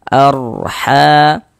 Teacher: Maka huruf ra sukunnya dibaca dibaca tebal, dibaca tabkhim. Nah, sehingganya pengkalisan kita naik terangkat ke atas ketika kita mengucapkannya. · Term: tafkhim